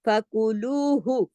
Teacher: का, नफ्स ऐसे कर देंगे। फिर फकुलूहु, फकू काफ पेश कू, लू को दो हरकत खींचेंगे क्योंकि उसके साथ वाव मद्दा है